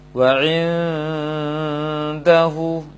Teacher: nun sukun bertemu dengan dal, nunnya harus samar, tidak boleh jelas. Oleh karena itu jangan sampai nempel ke dal dan juga tidak nempel ke nun.